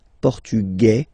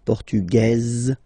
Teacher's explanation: it will be only in this z sound the difference between the masculine form and The Feminine form okay masculine portug you don't pronounce the S feminine form portuges · Masculine, portugais, you don't pronounce the S. Feminine form, portugaise, you pronounce this z sound